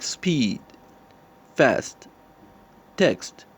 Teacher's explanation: it is alveolar in the manner of articulation it is fricative and in voicing it is voiceless